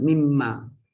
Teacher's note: Kita lafaz mimma, nun mati bertemu mim menjadi idgham ma'al gunnah.